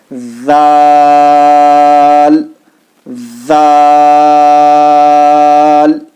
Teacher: زبان کی نوک بتایا کہ آپ کو دانتوں کے باہر رکھ کر تب بولنا ہے